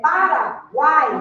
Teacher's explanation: uma semivogal uma vogal e uma semivogal na mesma sílaba na mesma sílaba · eu estou diante de um tritongo oral, porque na pronúncia o som sai totalmente pela boca.